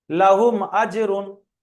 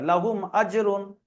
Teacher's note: লাহুম আজরুন, এই শব্দটির বানান ইজরা করুন। তাহলে মিম সাকিনের পরে হামজা এসছে, কি হবে? এখানে কোনো গুণনা হবে না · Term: ইজহারে স্বাভাবিক